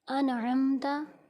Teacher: اس میں بھی نون کو ظاہر کر کے پڑھیں گے کیونکہ نون ساکن کے بعد حروف حلقی میں سے عین آ گیا ہے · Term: اظہار